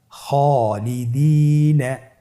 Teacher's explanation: খ এর পরে যেহেতু আলিফ হরফটি রয়েছে তাহলে আপনার আলিফ হরফটিকে মোটা করে পড়তে হবে